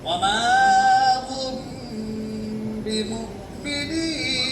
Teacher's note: इक्फा करेंगे। आवाज़ को नाक में छुपाएंगे।